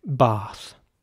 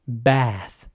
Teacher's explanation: with an air sound as opposed to an R sound